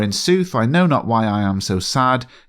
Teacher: The rhythm (meter) of these two lines is a perfect example of five sets of an unstressed and stressed syllable. In fact, the rhythm is so predictable that it is almost monotonous: Shakespeare deliberately does this to mirror Antonio’s mood. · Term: Iambic pentameter